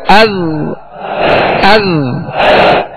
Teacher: زال کو جب ادا کریں گے زبان کا سرا اوپر کے جو سامنے والے 2 دانت ہیں اس کے اندرونی کنارے سے لگائیں گے، یہ اس کا مخرج ہے، اس کے نکلنے کی جگہ ہے.